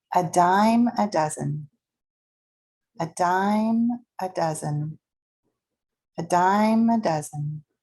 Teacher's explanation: A dime is stressed and held out longer. And then a schwa sound. · A dime goes up and held out and stressed. A dime, and it's linked together.